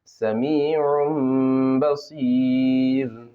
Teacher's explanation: دو پیش کی تنوین کے بعد با ہے، نون کو میم سے بدلیں گے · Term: اقلاب